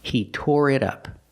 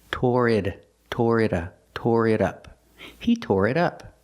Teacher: We hear the T in it sound like a fast D.